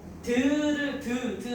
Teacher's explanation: 이 혀가 잇몸에 붙었다가 떨어지면서 소리가 나요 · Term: 잇몸 소리